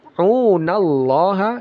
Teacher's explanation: Ini lafaz jalalah dibaca tebal ya.